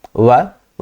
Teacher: वकारस्य दंतोष्ठम वकार जो है इसका उच्चारण स्थान दंतोष्ठ है। दांत और दोनों ओष्ठ होते हैं।